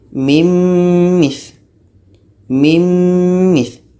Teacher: Nun mati masuk kepada mim, jadi bunyi nun hilang, yang tinggal bunyi mim. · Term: idgham